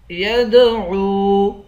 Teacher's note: عین کو واو کے ساتھ ملا کر واو کو بھی ایک الف کی مقدار کھینچیں گے۔